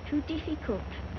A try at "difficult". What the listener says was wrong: Diff. Not deep. The word is difficult.